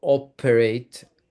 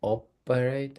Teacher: the emphasis, the stress is on the first syllable